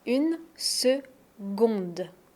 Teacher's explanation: 1 seconde, c'est le son G. G, même s'il y a un C, on ne prononce pas K, on prononce G.